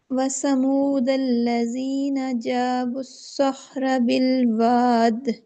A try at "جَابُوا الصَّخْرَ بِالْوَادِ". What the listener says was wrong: پر کرنے میں لمبا کرنے میں دونوں میں فرق ہے نا. پر کرنا لمبا نہیں کرنا.